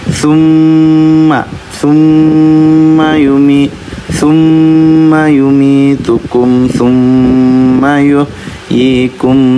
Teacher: karena mulutnya ketutup kita bacanya nafasnya melalui hidung jadi dengungnya melalui hidung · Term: gunah syadadah